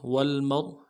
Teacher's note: واو کو لام کے ساتھ ملانا ہے، میم کو را کے ساتھ ملانا ہے، را کو موٹا کریں گے